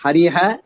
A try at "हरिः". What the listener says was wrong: ஹரிஹன்னு சொல்லக்கூடாது, ஏன்னா அந்த விசர்க்கமானது ஈயோட சேரும் போது ஈ மாதிரி தன்னை மாத்திக்கும். ஹரிஹி